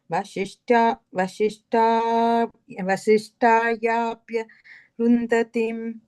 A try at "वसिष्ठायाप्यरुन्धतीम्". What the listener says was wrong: Second line, tail end, you have to kind of say it together without stopping. It's like Vasishtayapyarundhatim.